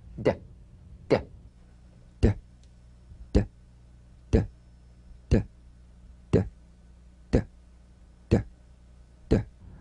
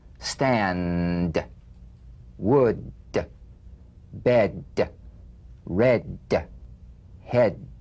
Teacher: Cognate. Voiced tongue front palatal stop consonant. Play this D drum beat on the springing away of the tongue from the upper gum ridge.